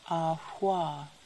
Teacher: Voiceless labial velar fricative.